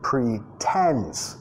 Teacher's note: Acentuación de la palabra. Primera sílaba reducida. Pretends. Segunda más fuerte, más larga el sonido vocálico.